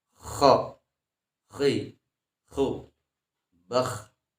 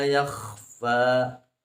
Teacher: makhrajnya adnal halqi, jadi di ujung tenggorokan. Sifatnya adalah isti'la.